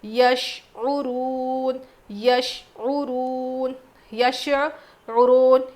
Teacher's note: شین میں قلقلہ نہیں، اور یہاں پہ عین کی آواز بھی آئے گی